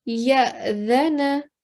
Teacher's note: because it's an alif sakin, with the rule that we've learned today, we need to give a soft jerking sound.